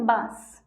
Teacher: बांस में चंद्र बिंदु लग रहा है। बांस जो है उसे हम कम समय के लिए बोल रहे हैं और हमें अपने नाक और मुंह की ज़रूरत पड़ रही है इसे बोलने के लिए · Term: अनुनासिक